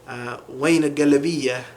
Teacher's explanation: So instead of ain, it becomes wain.